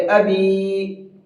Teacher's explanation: یائے مدہ کو کھینچ کر کے پڑھا جاتا ہے، تو یہاں اس کو بھی کھینچ کر کے پڑھیں گے ابی۔